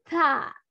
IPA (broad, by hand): θ